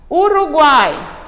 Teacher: um conjunto formado por semivogal + vogal + semivogal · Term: tritongo